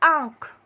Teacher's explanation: उसके बाद शब्द दिया हुआ है आँख, लेकिन हम बोलते हैं आँख। तो आ के बाद जो हम आधे न का उच्चारण कर रहे हैं वो करते वक्त ध्वनि मुंह के साथ साथ नाक से भी निकल रही है, इसलिए हम आ पर चंद्र बिंदु लगाएंगे।